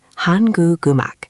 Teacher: The guh from guk moves to the ung of um. So it becomes hangu imak. · So basically, whenever I see a word ending in a consonant followed by that empty ung, I should connect them. >> It's like the consonant is jumping to the next syllable. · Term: Liaison, liaison